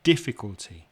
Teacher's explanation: difficulty four syllables but the first syllable is stressed